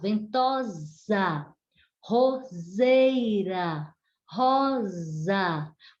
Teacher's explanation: Todas têm o som de Z, mesmo escritas com S.